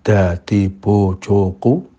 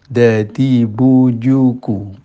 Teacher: mestinya harus bu bukan bo ya, bu, terus tidak boleh ada angin